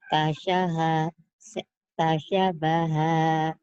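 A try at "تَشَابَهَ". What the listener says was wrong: Sa-nya panjang.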